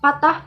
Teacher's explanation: satu konsonan hambat bilabial P sudah muncul pada kata patah